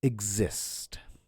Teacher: when X comes before a stressed syllable, it makes a GZ sound